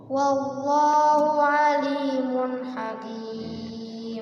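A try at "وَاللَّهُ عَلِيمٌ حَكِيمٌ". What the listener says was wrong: Cukup, ganti. Pakai a, jangan pakai o ya.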